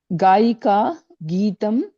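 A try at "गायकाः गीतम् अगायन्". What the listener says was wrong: విసర్గ గాయకాః అని ఉంది కదా ఇక్కడ కనబడుతుంది గా విసర్గ పలకాలి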